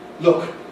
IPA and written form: lʊk (look)